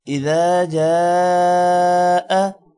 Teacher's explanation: جا پر الف پر مد ہے، لمبا ہوگا